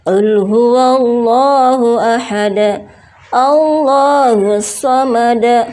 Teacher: terdapat lafzul jalalah yang sebelumnya berharokat dhammah, maka harus dibaca dengan tebal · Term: lam tafkhim